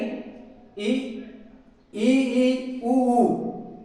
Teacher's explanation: समृद्ध वर्ण ई उ मुंह को बिल्कुल एक प्रकार से बंद की तरह करके फिर बोलना पड़ता है।